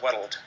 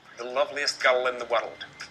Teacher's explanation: if you get an l after the letter r sometimes you'll have an extra syllable on the word